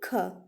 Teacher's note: स्पर्श व्यंजन भी है, कंठ ध्वनि भी है, यानी कि उसका उच्चारण कंठ से होता है, अघोष भी है, और महाप्राण ध्वनि भी।